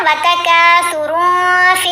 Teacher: احفا ہے نا، تنوین کے بعد فا ہے، فا حروف احفا میں ہے، تو احفا کرتے ہوئے نون کی آواز کو ناک میں چھپا کر پڑھتے ہیں · دال ساکن نہیں ہے، نیچے زیر ہے، لیکن وقف کیا نا، وقف کرنے کی صورت میں دال کو ساکن پڑا ہے تو پھر بھی کلکلا کرنا ہے